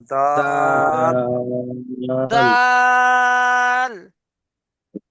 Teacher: জিভের আগা সামনের উপরে দুই দাঁতের গোড়ার সাথে লাগান।